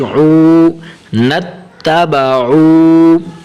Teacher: عین کو تھوڑا لمبا کریں گے کیونکہ آگے واو آ رہی ہے